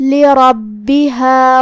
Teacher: را پہ زبر ہے تو ہمیں را کو تفخیم سے ادا کرنا ہے، مطلب را کو ہم بھاری آواز میں پڑھیں گے